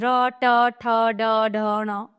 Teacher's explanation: मूर्धन्य यानी कि कठोर तालू के अगले भाग से